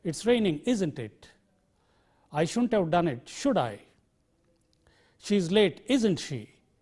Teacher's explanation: It is generally the falling tone which is used on the question tags.